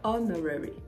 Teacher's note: In honorarium, the stress is on the third syllable, rare. But in honorary, the stress is on the first syllable